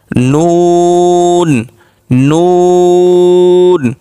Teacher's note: নটা উচ্চারণ করার সময় আমরা অটোমেটিকলি দেখব যে জিহ্বার আগাটা উপরের তালুর সঙ্গে লাগতেছে, দাঁতের গোড়া নয়